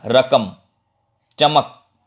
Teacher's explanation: तो क में पूरा अ का प्रोनाउंसिएशन उच्चारण नहीं हो रहा है